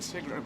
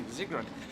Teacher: The S is pronounced like a Z in German.